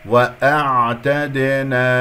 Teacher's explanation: وأعتدنا قلقلتها، أعطيها حقها من جريان الصوت فتخلص من هذه القلقلة، والدال مقلقلة قلقلة صغرى في وسط الكلام